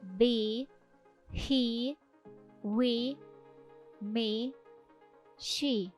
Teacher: голосна буква і у відкритому наголошеному складі вимовляється як довга і